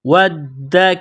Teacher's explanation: واو کو پڑھتے وقت ہونٹوں کو گول کرنا ہے، واو کو دال کے ساتھ پلس کرنا ہے، ملانا ہے۔ دال مشدد ہے تو دال کو دبانا ہے